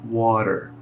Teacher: o t Eu praticamente não pronuncio e o r no final da palavra eu enrolo